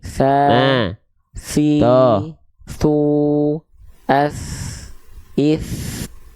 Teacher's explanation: jadi ujung lidah kita disentuhkan ke Ujung gigi seri atas kita oke nah gigi seri bawah enggak perlu ikut mencapit ini cuma